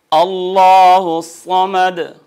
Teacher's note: لام جلالہ ما قبل مفتوح مضموم پر حجم ہوگا، بھاری ہوگا